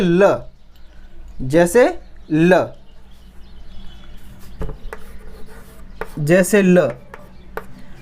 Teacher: जब हम ल का उच्चारण करते हैं तब हमारी जीवा सीधी खड़ी हो जाती है और हवायु आसपास से बाहर निकल जाती है। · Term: पार्श्विक व्यंजन